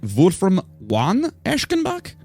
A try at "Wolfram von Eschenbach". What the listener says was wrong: It's Wolfram Eschenbach. They don't say the von. It's silent. It's a silent va.